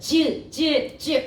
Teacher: 지읒은 위로 올라가 버려. 그래서 입천장 가까이 가가지고 즈 이렇게 발음이 되는 거야.